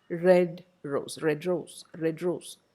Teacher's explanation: It is not a phonemic change, it is an allophonic change. The quality of d changes. It becomes a post-alveolar sound because of the influence of r. Red rose. You don't say red rose, red rose. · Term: post-alveolar d